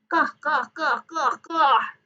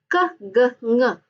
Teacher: They are velar, in which the back of the tongue is on the velum.